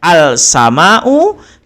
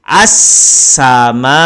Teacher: bunyi lam tidak ada pada bacaan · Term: alif lam syamsiah